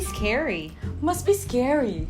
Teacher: of course you can pronounce the T sound but for you to sound more natural if you'd like that you know just be confident dropping the sound